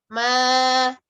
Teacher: Ya, ma-nya jangan masuk ke hidung. Ma, berikan getaran di pita suara.